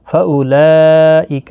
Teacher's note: یہاں پر مد متصل ہے، 4 الف کی مقدار کے برابر کھینچ کر پڑھیں گے